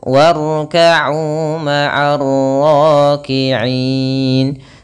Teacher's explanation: Kemudian ma'ar ra, kembali lagi ada alif lam yang dimana di sini termasuk daripada alif lam syamsiyah, yaitu alif lam yang kita tuliskan akan tetapi dia tidak dibaca